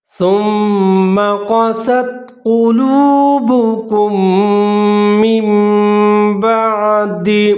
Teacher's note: میم مشدد ہے، سا کے ساتھ ملا کر پڑھیں گے اور ادغام کریں گے غنّے کے ساتھ